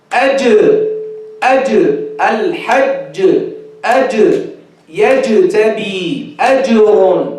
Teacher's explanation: They get rid of the shidda of the Jeem by making qalqala.